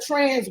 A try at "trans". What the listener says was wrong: Trans. No. Your version is TRANCE. Trans.